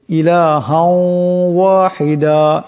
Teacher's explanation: এই 2 জবরের তনবিনকে ওয়াবের সাথে মিলাইয়া এক আলিফ পরিমাণ গুণনা করিয়া পড়তে হবে। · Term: ঈদগাম মাল গুন্না